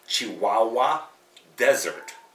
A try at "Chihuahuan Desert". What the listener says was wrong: Chihuahuan. No, Chihuahuan. It ends in an N. Chihuahuan. Chihuahuan Desert. And they're called Chihuahuan Desert.